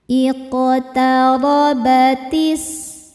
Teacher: ro dibaca secara tafkhim karena berharakat fathah. Cara bacanya ro ditebalkan.